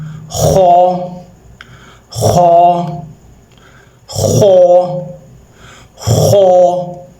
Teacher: موٹا پڑھنا ہے اس کو اور حلق سے پڑھنا ہے۔